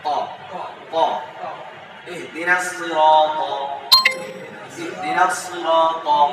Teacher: ত, তা এবং ত একই জায়গায়, তবে আওয়াজটা মোটা।